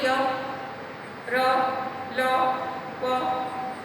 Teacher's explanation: इनको य, र, ल, व जो य, र, ल, व जो 4 व्यंजन हैं इनको अंतस्थ इसलिए कहा गया है क्योंकि ये इनको उच्चारण करते समय किसी भी जगह हम जो हमारी जीभ है, जो हमारी जीवा है, जबान है, वो मुंह के किसी भी हिस्से को पूरी तरह नहीं छूती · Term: अंतस्थ व्यंजन